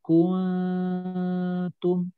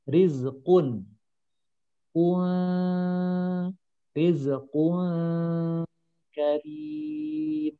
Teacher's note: Manyun hanya di kaf. Masuk ke nun samar, di bibirnya sudah tidak manyun. Nanti manyun lagi di ta yang domah.